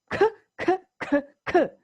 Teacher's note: in order to make the sound C the back of the tongue is used